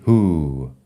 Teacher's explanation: La H se aspira, la W no suena y la U es larga. Who, bueno, la U, la O suena como si fuera una U larga.